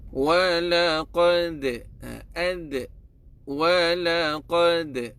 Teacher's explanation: huruf dal dia akan pantulkan, tetapi tuan-tuan dan puan-puan, bila pantulkan dia akan pantulkan secara landai